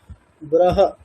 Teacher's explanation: হকারের উচ্চারণ স্থান হচ্ছে কন্ঠ